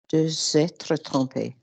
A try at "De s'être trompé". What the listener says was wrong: Spot on.